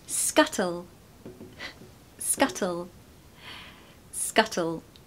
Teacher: We have a really strong T in the British accent.